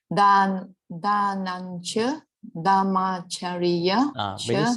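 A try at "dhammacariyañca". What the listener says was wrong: When you say dhamma, you have to say dham. D-H. See, there's H over here.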